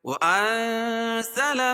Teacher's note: نون ساکن کے بعد حروف اخفا کے 15 حرفوں میں سے زا ہے تو یہ ناک میں آواز کو چھپا کر پڑھیں گے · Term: اخفاء حقیقی